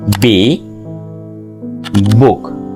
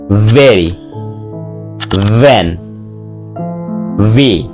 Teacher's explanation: the letter will be B and organs will be upper lip and lower lip. B, book, but V, upper teeth and lower lip.